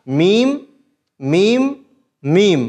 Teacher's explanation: यानी सूखा रहता है और यही मीम का मखर है कि दोनों होठों को हम बिल्कुल बाहर वाले हिस्से से मिला देंगे तो मीम अदा हो जाएगा